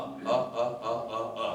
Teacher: That's a neutral vowel. It's in the middle back here.